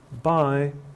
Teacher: we use uh Rising tones with greetings and farewells